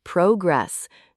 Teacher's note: making sure the word progress has the stress on the first syllable